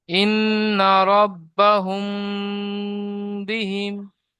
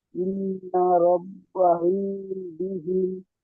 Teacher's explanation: মিম সাকিনের পরে বা এসেছে, তাই মিমকে এক আলিফ পরিমাণ গুণনা করে পড়তে হবে